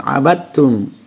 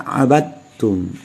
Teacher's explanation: Karena dal bertemu ta, huruf yang sama makhraj. Jadi langsung masuk aja ke ta, abadtum.